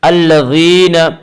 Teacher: الذین یا مدہ وہ یا جو ساکن ہو، اس سے پہلے زیر ہو، یا مدہ کو ایک الف کے برابر کھینچ کر پڑھیں گے